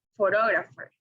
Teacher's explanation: the word stress is located in the second syllable